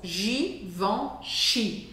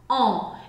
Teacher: tem um som nasal, que é o som on. On. É um som diferente do som an do português.